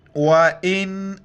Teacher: نون ساکن ناک میں آواز پیدا کرنی ہے